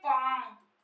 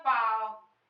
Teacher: हमने दो वर्ड बोला है, एक अनुनासिक है एक निरनुनासिक है